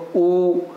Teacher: ऊ अब हम उच्चारण करते हैं ऊ का, ऊ तो जब हम ऊ का उच्चारण करना है तो सिर्फ हरकत कहाँ हो रही है, हमारे होठों में हो रही है, देखो आप करके देखो ऊ, और तो कहीं जीभ कहीं स्पर्श नहीं कर रही, तो ऊ का उच्चारण स्थान क्या होता है हमारा, ओष्ठ से